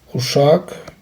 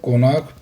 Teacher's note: Vurğu ikinci hecanın üzərinə düşür